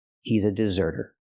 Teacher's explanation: Again, the T is between vowels, so it's a fast D.